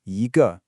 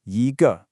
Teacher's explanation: if it comes right before a heavy falling fourth tone word, it bounces up into a rising second tone. For example, before the fourth tone ge, it becomes yi ge.